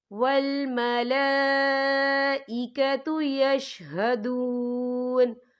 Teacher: والملائکۃ یشہدون، یا دیکھیں آپ کو چھوٹی سی توئی لکھی نظر آ رہی ہے، تو یہ پھر مطلب کی علامت ہے، تو یہاں پہ ٹھہرنا بہتر ہے۔ وقف کی صورت میں نون ساکن ہو جائے گا۔